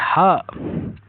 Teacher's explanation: व्यंजन के उच्चारण में हवा कंठ के भीतर स्थिर स्वर तंत्र से रगड़ खा कर निकलती है।